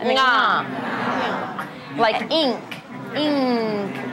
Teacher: It's the N said at the back